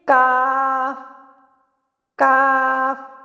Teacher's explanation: काफ हमेशा बारीक अदा होता है।